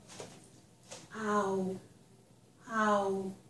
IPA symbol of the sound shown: aʊ